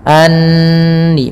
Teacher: tahan suara nunnya karena di sini ada bacaan gunnah, kita tahan dengan 2 harakat